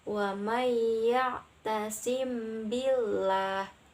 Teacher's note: Nah, huruf mim bertemu dengan huruf ba serta memakai guna. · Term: ifa syafawi